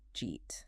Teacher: did you eat? Which often becomes just jeet.